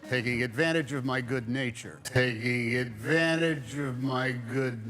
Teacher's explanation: he drops the T in the NT letters combination